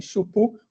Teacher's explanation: uma vogal breve, e a consoante alongada